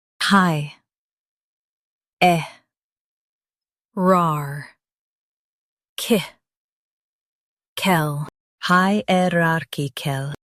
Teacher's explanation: Emphasize rar and soften kickle.